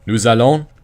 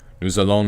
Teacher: remember to pronounce the S because there's the vowel